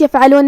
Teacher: کلمت یفعلون میں یہاں بھی حرف العین کو ہم حلق کے درمیان والے حصے سے ادا کریں گے